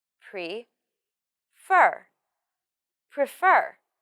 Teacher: The stress of this word is on fur.